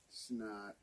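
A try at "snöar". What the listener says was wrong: You gotta roll. There's an R that you gotta roll at the end.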